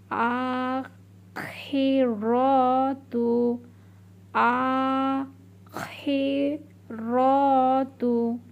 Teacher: এখানে মনে রাখবেন খ, খ কিন্তু একটা খসখসে আওয়াজ হবে।